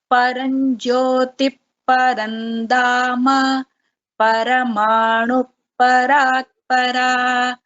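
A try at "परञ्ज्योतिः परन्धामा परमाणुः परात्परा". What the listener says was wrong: So this visarga should be heard, but not full visarga. It's like half. Paranjyoti Parandhama. So half visarga and this pa will little bit sound like Paranjyoti Parandhama. Half visarga. So it is definitely better than how you chanted the first time, because it was very plain. Paranjyoti Parandhama.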